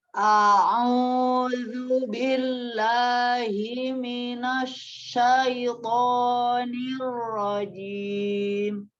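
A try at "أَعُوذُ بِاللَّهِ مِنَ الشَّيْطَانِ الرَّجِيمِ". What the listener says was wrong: Nah, sama dia ketika kasroh ya, turun ke rahang bawahnya. Billahi. Jadi jangan cuma billahi seperti, tapi turunkan billahi ya, kesempurnaan harokat kasroh. Hati-hati untuk di huruf sin. Biasa ya, kalau untuk ta'awudz untuk yang serta pertama biasanya agak sedikit lama ya. Oke, huruf shin ya. Sin itu termasuk lisan, huruf al-lisan. Jadi bukan huruf safatain, bukan yang dari bibir. Jadi lantas tidak membacanya minash.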